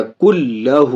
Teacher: نون کو لام میں بغیر غنہ کے ادغام کر، اس کو اس سے ملا رہے ہیں، ملا کے پڑھنے کو ادغام کہتے ہیں۔ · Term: ادغام بلا غنہ